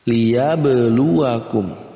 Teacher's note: ba termasuk dalam huruf-huruf qalqalah, maka kita baca dengan dipantulkan. Liyabluwakum, kita baca dengan dipantulkan.